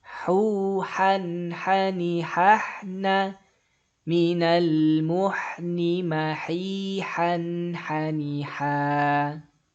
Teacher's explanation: Suara an-nya jelas tanpa ada dengung ya, tanpa ada dengung dan juga nggak boleh disamarin. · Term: izhar halqi